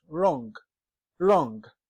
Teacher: W as a letter is present in words but we as a sound is absent